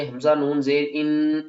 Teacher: اور جو آواز ہے وہ ناک سے آئے گی، یعنی ناک کے جو بان سے ہے نا، یہاں سے آواز آئے گی۔ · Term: غنہ